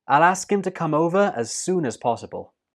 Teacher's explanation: The last sound in soon is the N, and that links to us to become soonas, soonas. And the last word possible is stressed.